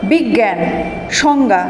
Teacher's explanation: বর্গীয় জ যোগ ইয়, এর উচ্চারণ গয়ের মতো